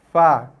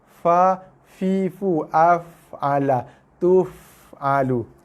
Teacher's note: bersentuhan gigi atas dengan bibir bawah. Fa. Keluar bersamanya ialah hembusan nafas.